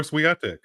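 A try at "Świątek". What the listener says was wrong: Yeah, because you have to pronounce the W like a V.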